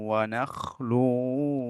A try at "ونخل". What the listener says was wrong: এ, ভাই, ওয়ানাখলুতে খটা আর একটু মোটা করবেন, আর ওয়ানাখলু পরে যে ওয়াওটা আর একটু পাতলা। ওয়ানাখলু ওয়ারুম্মান।